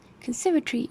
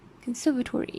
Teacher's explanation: When the preceding syllable is stressed, in most cases RP drops the schwa and GA keeps the O, as in conservatory, pronounced conservatory in English and conservatory in American English.